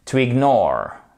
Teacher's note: on a notre accent tonique qui commence sur le N et la fin du mot